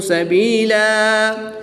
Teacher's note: 2 زبر کی تنوین کو وقف کی حالت میں الف مدہ سے تبدیل کر کے پڑھیں گے۔